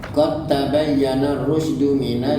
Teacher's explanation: da dengan ta tu satu makhraj walaupun huruf lain-lain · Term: mutajalisai